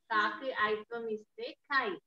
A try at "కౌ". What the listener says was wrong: ఔత్వం. కా కింద ఐత్వం.